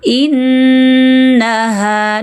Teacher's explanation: Pertama, nasalkan nun dengan shaddah. Innaha. Cukup sengau, jangan dipanjang-panjangkan.